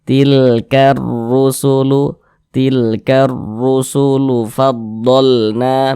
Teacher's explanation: Huruf ro memiliki harokat dhammah, maka huruf ro-nya itu dibaca tebal, dibaca tafkhim, sehingga pangkalisan kita itu ketika kita mengucapkannya itu dia naik terangkat ke atas.